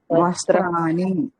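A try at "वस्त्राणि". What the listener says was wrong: అణ వస్త్రాణి అని పలకండి. ఇవన్నీ అణాలు వస్తాయి.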